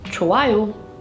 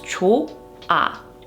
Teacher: when you have the hieut as a 받침 and it is followed by a vowel sound, then the hieut is silent